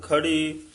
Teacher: ਜਿੱਥੇ ਖੜਨ ਦਾ ਵਾਚਕ ਹੋਵੇ ਉਥੇ ਭਾਰਾ ਉਚਾਰਨ ਕਰਨਾ